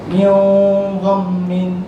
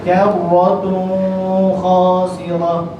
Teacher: ketika mana dia baca dengan nun mati atau nun sakinah dan tanwin, ketika bertemu huruf ghain dengan kha, dia baca dengan gunnah.